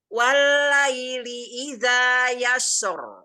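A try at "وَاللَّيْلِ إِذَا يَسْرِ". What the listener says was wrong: Tidak naik suara, tidak naik di lamnya. Walaili tipis. Walaili idza yasra. I-nya jelaskan kasrahnya.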